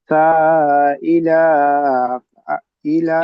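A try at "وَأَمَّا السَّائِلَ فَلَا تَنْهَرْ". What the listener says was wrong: লাম টান হয়ে যাচ্ছে, ইলা টান হবে না। ওয়া আম্মাস সাইলা ফালা তানহার।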